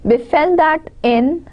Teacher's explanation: Now be and fell, the first is unstressed and the second is stressed. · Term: iambic pentameter